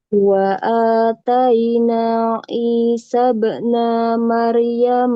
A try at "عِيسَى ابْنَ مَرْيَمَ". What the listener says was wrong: pendek. Isa bena, nanya pendek. Isa bena Mer. Isa bena Mer. Dusnya panjang